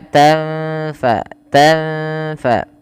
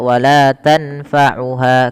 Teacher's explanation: nun sukun bertemu fa, samarkan nunnya ketemu dengan huruf fa.